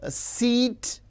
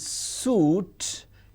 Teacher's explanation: e it is front close and u is back close. So we can give a three- term label to this. · E is front close unrounded whereas U is back close rounded